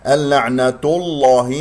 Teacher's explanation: تفخم اللام من اسم الجلال من غير أن نفخم التاء المربوطة ، نقول اللعنة الله، نفخم هذه التاء المربوطة، هذا خطأ، إذن